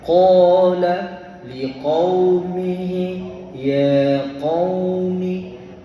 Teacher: Ha jaga huruf qaf tu. Jangan baca likau. Kalau liku jadi kaf. Dia kena muncung mulut.